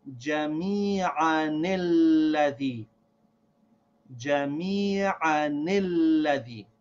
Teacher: the noon sound of the tanween is going to be read with a kasra, so that we say, jami'anilladhi.